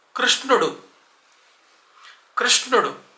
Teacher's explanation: అంటే ర కొమ్మిస్తే ఋ వేరు ర్ వేరు నేను ఎలా పలుకుతున్నానో చూడండి ర్ అది ఋ కి రి కి మధ్యలో ఉండే సౌండ్